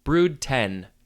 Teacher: the d from brood and the t from 10 sort of get combined